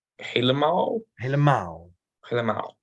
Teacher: The emphasis is on maal. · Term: De klemtoon